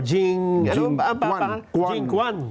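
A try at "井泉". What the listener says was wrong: Pero hindi Kuan ang pronunciation. Ang pronunciation, Chuen.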